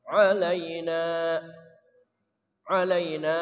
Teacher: Ain dari tengah kerongkongan